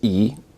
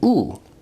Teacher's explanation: terms of backness vowels are either considered front Central or back remember that e is a high vowel but it's also a front vowel while U is a back vowel